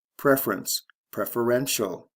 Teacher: Stress shift, first to third syllable, CE to TIAL.